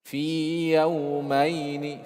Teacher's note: fi tetap dibaca panjang 2 harokat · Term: huruf mad